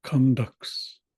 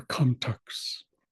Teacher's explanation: pronounce it the way I do it, which is where the T sounds more like a D